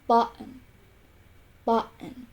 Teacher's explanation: In American English, these words are pronounced with the glottal T.